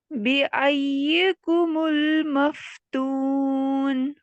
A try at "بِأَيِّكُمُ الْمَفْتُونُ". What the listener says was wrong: ٹھیک ہے یا کی کسرہ کو اور باریک کریے. بِأَيِّكُمُ الْمَفْتُونُ. اب دیکھیں یہاں پہ تھوڑا سا نا ہم جھٹکا دے لیں. ایسے کر کے پڑھ رہی ہوں میں. کیوں؟ کیونکہ یہاں پہ دیکھیں دو یا ہیں.